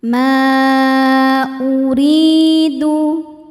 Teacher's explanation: maka mimnya panjang. Boleh empat boleh lima harakat. · Mad tabi'inya adalah alif sebelumnya baris fathah pada kata pertama ma, sedangkan hamzahnya alif dengan harokat dhammah pada kata kedua uridu. Maka mimnya panjang, boleh 4 boleh 5 harokat. Ma uridu, ri, huruf ro dibaca tarqiq sebab barisnya kasrah. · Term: mad jaiz munfasil